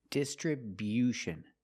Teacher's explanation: We move the stress to the first and third syllables. The first syllable, dis.